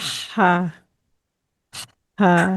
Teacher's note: जब आप तेज तेज चलकर आती हैं और हाँपती हैं, तो जो ये हाँपने के टाइम पर जो आपका साउंड निकलता है वो इस हा का मखरज है